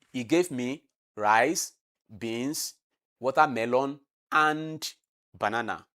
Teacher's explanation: is falling intonation, is from high pitch to low pitch · When I say banana, it has come from high to low. That is falling tone.